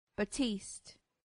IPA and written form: bæˈtiːst (batiste)